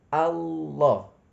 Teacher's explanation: cara membacanya bukan ditambah waw, tapi huruf lamnya ditebalkan. Allah. Makanya namanya tafkhim, tebal.